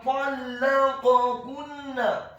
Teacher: huruf ta-nya dibaca tafkhim tebal dengan posisi bibir bawah kita agak tertutup dan posisi lidah kita di langit-langit atas, dibaca tafkhim tebal fathah 1 harokat. · huruf lam-nya dibaca tipis tarqiq, ditasydidkan ditekankan fathah 1 harokat